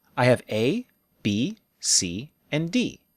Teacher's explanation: intonation for lists we use a pattern of rise rise fall the rising intonation tells our listener hey I'm still talking don't talk yet